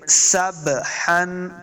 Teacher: سین کو سٹی کے ساتھ پڑھیں گے ، سبحن، پھر سین کے ساتھ جو با ہے ساکن، با